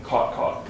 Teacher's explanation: In some parts of the United States, those vowels are exactly the same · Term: caught-caught merger